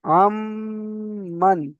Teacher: মিমের পর তাসদি আছে এটাতো গুন্না করে পড়তে হবে